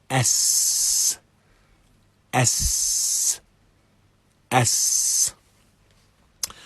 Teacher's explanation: we have the flowing of breath, and there is minimal vibration within the voice box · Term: Seen